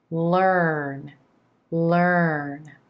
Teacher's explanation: here the tip of the tongue comes up behind those top front teeth for the whole L consonant sound